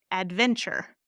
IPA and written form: ædˈvɛnʧər (adventure)